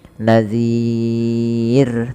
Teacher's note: sukun Arid karena waqaf tadi ya bukan sukun asli Nah kemudian lafal ro terakhir ini rnya dibaca dengan tipis kita mengenal dengan istilah ro tarqikq Maka jangan sampai dia menebal